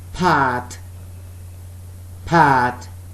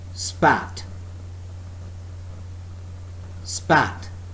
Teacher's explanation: Pat, both lips are together and there is a puff of air when we are speaking the word pat, per. But when I speak the word spat, there is less puff of air, or rather no puff of air